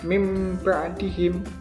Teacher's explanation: Bunyi nun mati atau tanwin itu diubah menjadi bunyi mim. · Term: iklab